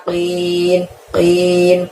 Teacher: keluarkan dari pangkal lidah kita hingga menyentuh langit-langit